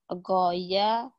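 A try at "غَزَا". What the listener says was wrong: Goza. Goya aja. Goza. Za nih. Penyakitmu nih. Yang lain udah bagus di za nih. Goza.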